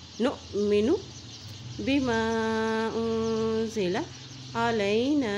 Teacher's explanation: یہاں دیکھیں حمزہ کے اوپر جزم ہے تو یہاں پہ جھٹکا دے کے پڑھیں گے